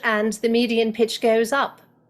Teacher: Here I am speaking in General American, and what you'll find is if I switch over into British, did you notice how the median pitch raised?